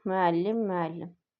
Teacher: Vurğu ikinci hecanın üzərində yox, üçüncü hecanın üzərindədir.